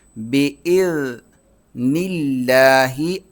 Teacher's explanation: لفظ اللہ سے پہلے زیر ہے تو اس پر جو ہے یہ باریک پڑھا جائے گا، موٹا نہیں پڑھا جائے گا